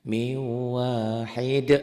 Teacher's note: Miu ditahan, ada dengungnya. Miu tuh ada dengung. Kalau tadi kan nggak ada dengungnya, nggak ada tahan. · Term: Idgham bi gunnah